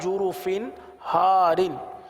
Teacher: تنوین کے بعد ہا ہے، ہا حروف حلقی میں سے آ رہا ہے، لہٰذا یہاں پر اظہار کا قاعدہ ہوگا، گنہ نہیں کریں گے، اور ہم نے گنہ نہیں کیا.